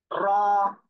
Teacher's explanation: এই অক্ষরে এক আলিফ টান হবে